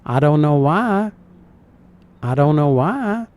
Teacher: she kind of sings it, really extending that vowel.